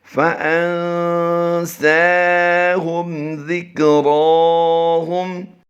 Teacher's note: یہاں پر ہم نے میم ساکن میں غنہ نہیں کرنا، یہاں پر نون ساکن میں ہم اخفا کریں گے